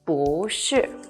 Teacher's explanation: when followed by the fourth falling tone becomes the second Rising tone